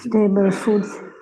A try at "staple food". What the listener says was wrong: Stable නෙමෙයි staple. S-T-A-P-L-E.